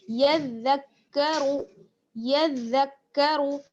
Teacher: آگے بڑھتے ہیں، یذکروا، یا کو ہمیں دال کے ساتھ ملانا ہے اور دال کو آگے کاف کے ساتھ، کیونکہ دونوں پر شد ہے، یا دال زبر یز، دال کاف زبر زک، یذک، یذک، کاف زبر کا، را پیش شروع، را کو پر پڑھنا ہے پیش کی وجہ سے